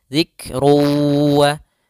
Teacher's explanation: harakat kemudian diikr wa quranum Mubin fal Zik ada lafaz Kaf ketika huruf Kaf sukun ada sifat hamasnya dialirkan sedikit